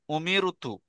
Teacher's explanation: র সাকিনের ডানদিকে জের থাকলে র কে বারিক করে পড়তে হবে